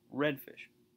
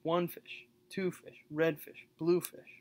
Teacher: that's actually a trochee so that's the stress comes on the first syllable is followed by the unstressed so trokey would be red fish or one fish two fish